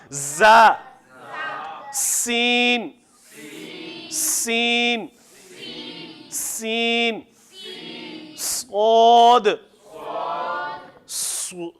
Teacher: صاد، زا، اور سین، تینوں سختی والے ہیں اور تینوں کے اندر سے سیٹی کی آواز نمایاں ہونی چاہیے